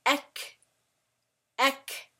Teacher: the specific parts that it is using is the deep tongue area and the soft palate. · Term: Aqsal Lisan